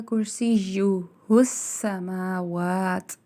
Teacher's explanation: کرسیہ السماوات، اور سین کے ساتھ ہا کو ملایا جائے گا اور سین میں سیٹی کی آواز کو قائم رکھا جائے گا